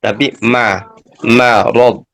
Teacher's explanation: meskipun ya dihimpit oleh huruf yang tafkhim, tapi mimnya tetap tarkik ya. Marad ya, tidak dibaca ma tapi marad.